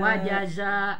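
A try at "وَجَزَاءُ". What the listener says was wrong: nu panjang nu kedua nak ya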